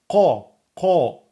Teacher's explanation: la langue est plus au fond quand on prononce le qa. Qa, c'est vraiment au fond. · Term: la lettre emphatique Qaf